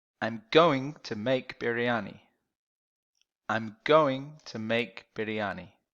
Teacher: Going and make are a little stronger than to and I'm.